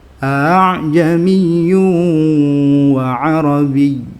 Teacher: Yang hamzah pertama masih jelas a, yang kedua dikurangi tahqiqnya jadi a gitu. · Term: tashil